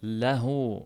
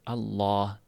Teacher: Mana shu holatdagida ingichka o'qilinganda la o'qilinganda tilni orqa qismi yuqoriga ko'tarilmaydi. Lo o'qiladigan bo'lganda tilni orqa qismi yuqoriga ko'tariladi. · Lo o'qiladigan bo'lganda tilni orqa qismi yuqoriga ko'tariladi. Mana shu farqi. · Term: yog'on